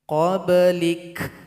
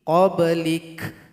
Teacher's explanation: Ketika berhenti di huruf kaf, berikan bunyi hamasnya. Qobelik. Itu adalah bunyi hamas.